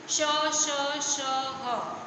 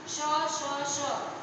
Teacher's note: ये श जो है, इसको जब आप बोलेंगे तो जीभ हमारी तालु से टच हो रही है, इसलिए इसको बोलेंगे तालव्य श